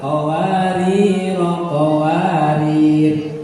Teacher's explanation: Jadi kalau kita berhenti di qawarir yang kedua, maka dibaca sukun rohnya atau dimatiin.